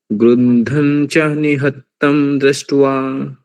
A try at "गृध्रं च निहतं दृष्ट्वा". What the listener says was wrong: गृद्धम् इति नास्ति गृध्रम् गृध्रं च it's not na it's nya